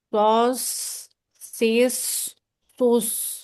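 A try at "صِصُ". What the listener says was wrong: Tebalnya sudah dapat, membulat sudah, naik sudah. Tinggal dilatih lagi gimana biar dia nggak terlalu pergerakan bibirnya itu ya. Jadi cenderung agak monyong, tapi nggak apa buat awal-awal tadi kan karena dia bukan huruf bibir, dia huruf lidah.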